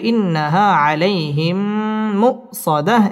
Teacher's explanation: জবরের বাম পাশে জজম ওয়ালাইয়া লিনের হরফ তাড়াতাড়ি পড়তে হবে আলাইহিম মিম সাকিনের বামে মিম আসছে ইদগামে মিসলাইন গুন্না করে পড়তে হবে ইন্নাহা আলাইহিম মুসাদাহ এখানে ওয়াকফ করতে হবে ইন্নাহা আলাইহিম মুসাদাহ إنها